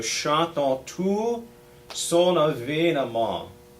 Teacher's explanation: So chantons, again we don't say those N's. Chantons, so chantons tout son avènement.